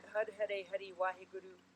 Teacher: to pronounce it in our american way of speaking hari but the r changes to a rolled r or d